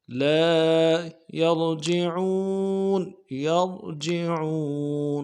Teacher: را کو موٹا کریں گے اور جعون میں عین کو یعنی واضح کریں گے، واو مدہ ہے، ایک الف دال میں کھینچیں گے۔